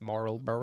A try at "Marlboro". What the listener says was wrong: Marlboro. I don't think you say the L. The L is silent.